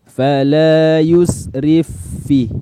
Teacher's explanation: Maka karena fa yang pertama disukun, fa yang kedua berharokat, maka fa yang pertama dimasukkan atau diidghamkan ke fa yang kedua. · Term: idgham mutamathilain